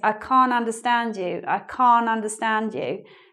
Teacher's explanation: in British English, we don't always say the T, we don't always pronounce the T in this word, can't. So it might sound like this, I can't understand you, but it might also sound like this, I can't understand you, I can't understand you.